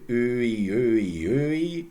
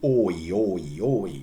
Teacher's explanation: If you say Öi, Öi, Öi, you have to move your tongue less and see Oi, Oi, Oi.